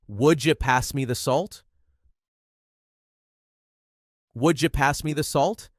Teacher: Here, you becomes ja, making the sentence flow smoothly and quickly.